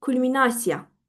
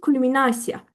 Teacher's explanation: Gəlin vurğumu qoyaq üçüncü hecaya. Yəni na hecasına